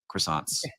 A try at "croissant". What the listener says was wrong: No, don't say croissants. Croissant. Croissant. get you don't have to get too crazy. You don't have to get too crazy.